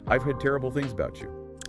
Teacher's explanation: I drop the pitch of my voice, I do not rush the words, and most importantly, I use a falling intonation at the very end of the sentence to show absolute certainty.